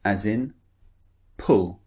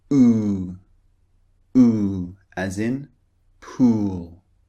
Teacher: And the first one is very short. The second one long.